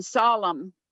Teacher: you don't pronounce both the m and the n you just pronounce the m solemn the n is silent